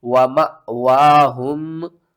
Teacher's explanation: تو آپ نے اس رول کو اپنے ذہن میں رکھنا ہے کہ جب بھی الف کے اوپر جزم آ جائے یا حمزہ کے اوپر جزم آ جائے تو دونوں صورتوں میں ہم نے کیا کرنا ہے، حمزہ کو جھٹکے کے ساتھ پڑھیں گے